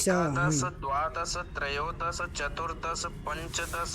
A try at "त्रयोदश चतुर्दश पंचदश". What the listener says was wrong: हाँ, यहाँ पर 10 सा में हलंत नहीं है, तो त्रयोदश, चतुर्दश, पंचदश ऐसे बोलना है।